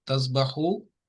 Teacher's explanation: واو ساکنہ اور پیچھے ضمہ ہے، تو یہ حرف مد بن گیا، اور یہاں پہ 2 کاؤنٹس آپ نے لمبا کرنا ہے